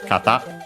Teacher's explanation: kata should be accented on the last syllable